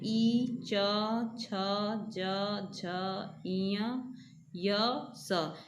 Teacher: इन सभी वर्णों को हम लोग तालु से बोलते हैं